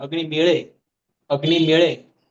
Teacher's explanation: यहाँ पे अच हो, पीछे अच हो, बीच में ड ड बैठा हो तो ड़ ड़ ऐसा बन जाता है